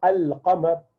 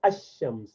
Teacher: So these are the letters which are qamari letters, means they are pronounced with lam, because with qamar you say al-qamar, whereas rest are shamsi letter, because for shams you say ash-shams, you do not say al-shams.